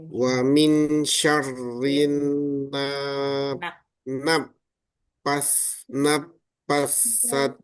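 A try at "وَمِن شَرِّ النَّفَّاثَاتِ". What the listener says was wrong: Ah, dipanjangin dulu fanya. Naffatha. Naffatsati Fa-nya dipanjangin 2 harokat, Pak. Naffatha. Naffa. Jadi fa-nya dipanjangin. Naffatsati.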